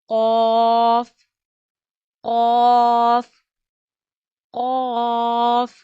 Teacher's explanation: We read qaf by using the root of our tongue and soft part of our palate.